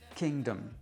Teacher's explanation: le suffixe dom ne va pas être accentué